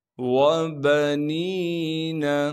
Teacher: وَجَعَلْتُ لَهُ مَالًا مَمْدُودًا وَبَنِينَ، واو کو بغیر کھینچے پڑھیں گے، با کو بھی بغیر کھینچے پڑھنا ہے، نون کے بعد یا مدہ ہونے کی وجہ سے نون کو ایک الف کے مقدار کھینچیں گے